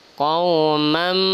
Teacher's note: Kemudian di sini ada tanwin atau baris 2 bertemu dengan mim. Namanya adalah idgham bi gunnah, maka juga dengung